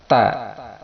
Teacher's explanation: Huruf ta, makharijul hurufnya berada di ujung lisan yang disentuhkan pada pangkal gigi seri yang atas.